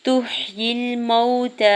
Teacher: واو ساکن سے پہلے میم کے اوپر زبر ہے، واو لین ہو رہا ہے، نرمی سے موڑتے ہوئے ادا کریں گے